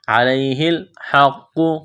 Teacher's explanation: قاف کو موٹا کرنا ہے، سختی کرنی ہے قاف میں